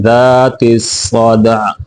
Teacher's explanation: واد دونوں کو موٹا کر کے پڑھیں گے، والارض ذات الصدع، صدع دال کے اوپر قلقلہ کرنا ہے، وقف میں عین کو واضح کر کے پڑھنا ہے